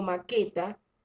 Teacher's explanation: estoy pronunciando la E, pero la U no la estoy pronunciando, por lo tanto no se forma diptongo.